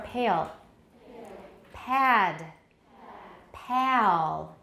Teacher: 对， 那 个 L 因 为 它 距 离 跟 那 个 前 母 音 远， 所 以 会 产 生 一 个 transitional vowel. In each case, you should be able to hear a noticeably different vowel quality before the velarized L. All the front vowels become considerably retracted in these circumstances.